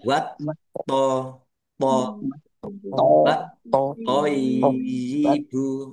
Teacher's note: Toknya dibaca double. Toknya itu agak berat ya dibacanya agak berat biar beda dengan tak. Wat to po wat toyibu yaknya ada tasdidnya dibaca toy dulu.